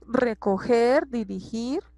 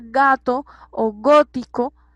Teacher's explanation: tenemos un sonido gutural un poco más fuerte que cuando decimos ga o go, porque nosotros ahí estamos como omitiendo con nuestras cuerdas vocales un poco el sonido de la G, ¿sí?